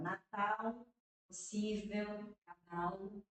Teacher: No sul do país, o L não é uma semivogal, mas no restante do país todinho, o L é semivogal